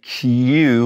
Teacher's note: we push our lips forward and it makes that u sound almost